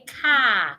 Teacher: In British, we will not pronounce the R. We will just say car. While in American, the R will be pronounced.